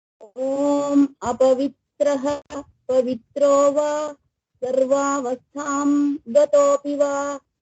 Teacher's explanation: रुकिए रुकिए। अपवित्रः विसर्ग है तो उसे खींचिए थोड़ा सा